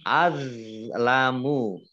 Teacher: Azlamu do-nya do sukun itu bukan kolkolah ya. Bukan kolkolah maka jangan dimantulkan